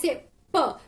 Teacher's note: I'm completely closing my mouth and then releasing the air from my mouth to pronounce P. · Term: plosives